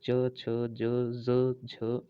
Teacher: तालव्य से जो मुंह के छत का पिछला हिस्सा होता है उसे तालव्य कहते हैं